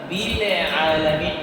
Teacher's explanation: যদি বিলে আলামিন বলেন তাহলে লামটা কলকলা হয়ে গেল।